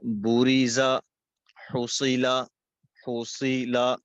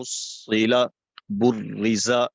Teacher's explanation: را اور صاد کے اوپر رکنا، یہ تشدید کو پڑھا جا رہا ہے